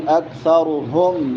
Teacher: کاف باریک ہے، ثا نرم ہے، را موٹی ہوگی ، اکثرهم ہا حلق کے آخری حصے سے جو سینے کے